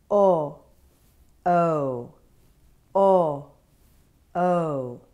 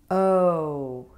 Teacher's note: Rose Boat OH is a rounded vowel that starts here (jaw slightly open, lips rounded) and moves up toward Blue Moon OO—with the lips closing